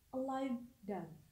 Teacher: Semua vowels pada kata a live dove dibaca pendek karena termasuk dari 6 vowel yang memang memiliki bunyi yang pendek. Kata live memiliki sound V di akhir kata, dan sebelum sound V terdapat vowels I, di mana termasuk salah satu short vowel.